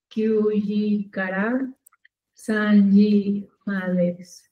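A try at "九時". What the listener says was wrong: Kyuji. No decimos. Sino... Kuji, ¿sí? Kuji.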